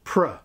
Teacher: begin with a very weak syllable /prə/, or better still /prə/ as quietly as you can make it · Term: schwa